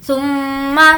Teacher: میم پر تشدید ہے، غنہ کریں گے